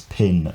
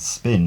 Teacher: in pin it has a burst of air in spin it doesn't have that burst of air